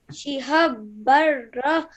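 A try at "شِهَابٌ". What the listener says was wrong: Over here, you did not elongate the sound of the ha because you need to because this is alif madda. Okay, shiha.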